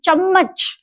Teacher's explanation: जैसे अगर आप उच्चारण करेंगे तो आपको पता चलेगा कि चम्मच बोलते समय जिह्वा तालु को स्पर्श करती है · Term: तालव्य ध्वनियां